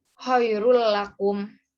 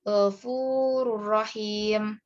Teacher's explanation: memasukkan bacaan nun sukun atau tanwin ke huruf berikutnya tanpa disertai dengung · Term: idgham bila gunnah